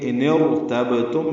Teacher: ملانے کی صورت میں یہ حمزہ نہیں پڑھا جا رہا، تو ان اور ارتبتم کی جگہ ان ارتبتم پڑھیں گے. اب بیچ میں دیکھیں را میں نے پر کر دی، اب را پر ہوگی، کیونکہ جب بھی را ساکن سے پہلے زیر ہو تو را باریک ہوتی ہے، لیکن بیچ میں اگر حمزہ ہو، حمزہ وصلی، تو پھر یہ را جو ہے یہ پر پڑی جاتی ہے، باریک نہیں رہتی.